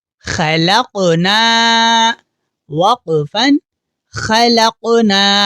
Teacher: اس لفظ کو خلقنا اس طرح نہیں پڑھیں گے، بلکہ قاف کی آواز ایکو ساؤنڈ کی طرح پیدا ہوگی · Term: قلقلہ